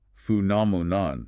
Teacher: The challenge is the length and the stress. Phenomenon, stressing the second syllable.